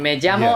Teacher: people don't know that it's like a j sound, and they just use a L